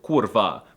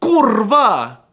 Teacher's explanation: sometimes I hear it as the short kurva, but often they pause a bit on the rolled R for emphasis and say something like Kurva!